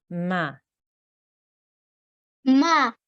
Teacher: Let's move on to the next one. We have a mim with a simple fatha, so it will be 1 second.